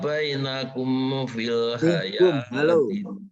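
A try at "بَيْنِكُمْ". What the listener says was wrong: baini. Tadi kebacanya bainakum.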